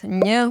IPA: ɲ